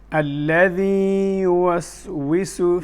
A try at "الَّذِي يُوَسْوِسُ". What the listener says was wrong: لا تغن أنت، الغنة موجودة في الياء. الذي يوسوس. الذي مكنت الياء، لأن الخطأ هنا أن بعض الناس يقرأها كيف يقرأها؟ الذي يوسوس. ماذا فعل؟ يدغم الياء في الياء. هذه الياء مادية لا تدغم. حتى لا تدغم لابد من التمكين لها. الذي يوسوس. لا تغن.